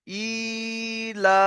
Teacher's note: প্রথমটা হামজা খালাজের ই, এটাও টান হবে, তারপরে লাম খালাজ আবার লা, এটাও টান হবে, কারণ হামজা খালাজের ই এটা হলো ইয়া মাদ্দার সমান, তাই একালিফ পরিমাণ টান দেবো।